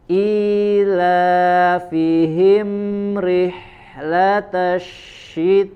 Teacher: ada huruf shin lagi, ya, jelaskan tafasyi'nya, ya, menyebar angin di dalam mulut kita